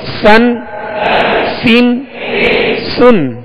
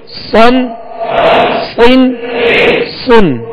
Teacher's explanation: इसमें सीन को बारीक और स्वाद को पुर यानी मोटा पढ़ेंगे।